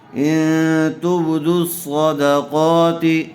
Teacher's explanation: صاد کو بھی پر کیجیے اور قاف کو بھی